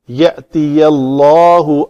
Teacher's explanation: اللہ اس میں جلالہ کا لام ما قبل زبر کے ساتھ ہے، اس کو پر کرنا ہے تو صرف لام کو پر کرنا ہے، یا کو پر نہیں کرنا۔ یہ پتلا رکھ کے آگے لام پر ہوگا۔